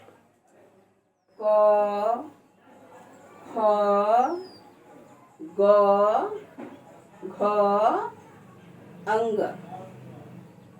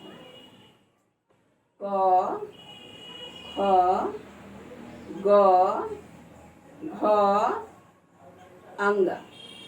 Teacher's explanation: जो जब हम इन वर्णों का उच्चारण करते हैं तो उच्चारण करने के समय यह आवाज कंठ से सीधा बाहर की ओर आती है, बीच में कहीं रुकावट नहीं होती है